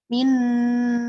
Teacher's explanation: jadi arti bahasanya gunah itu mendengung nah pengertian secara istilahnya adalah suara yang nyaring atau jelas yang keluar dari lubang hidung dengan tidak menggunakan lidah ketika mengucapkannya Min nah jadi nunnya itu ke rongga hidung Min gitu ya